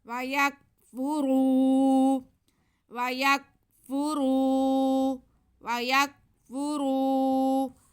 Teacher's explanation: را پہ پیش اور واو ساکن ہے تو یہ واو مدہ ہے. را کی آواز کو ہم موٹا بھی کریں گے کیونکہ اس کے اوپر پیش ہے اور کھینچیں گے بھی